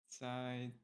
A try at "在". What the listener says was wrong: 在. So it's more like you end with like a lower 在.